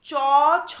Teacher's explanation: তালব্য ব্যঞ্জনে কি হচ্ছে না, জিহ্বার অগ্রভাগ তালুর সম্মুখ ভাগে শ্বাসবায়ু নির্গমনে বাধা সৃষ্টি করায় তালব্য ব্যঞ্জন ধ্বনি উচ্চারিত হয়